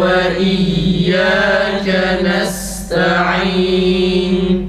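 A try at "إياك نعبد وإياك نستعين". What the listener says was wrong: Bu na'budu kelimesi gibi bayı düzeltemiyoruz arkadaşlar. Ba biraz uzatılıyor. İyyâke na'budu ve biraz seri bir şekilde akıcı bir sesle okuyalım ki ba uzatılmasın.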